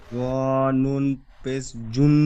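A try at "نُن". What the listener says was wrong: জুন বলে টান দিচ্ছেন, জুন হবে না, জুন। ইয়া জাবার ইয়া, জ নুন, জ নুন পেশ জুন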